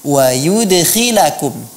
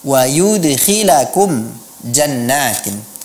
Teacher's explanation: qalqalah kita di sini termasuk ke dalam kelompok qalqalah sughra, qalqalah yang kecil, karena dia berada di dalam satu kata, di tengah-tengah kata.